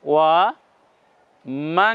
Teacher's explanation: নুনে জজম হলে আওয়াজ একটু ভিন্ন ধরনের করতে হবে আওয়াজগুলোকে নাকের মধ্যে নিয়ে যেতে হবে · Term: গুন্না